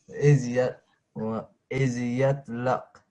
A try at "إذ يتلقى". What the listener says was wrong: So not going to take a fatha. This is going to take a vertical fatha. So this qaf, it's joined to a blank ya.